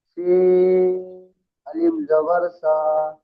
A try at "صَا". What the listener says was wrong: সা, মোটা করে বলেন। শিন আলিফ জাবার সা।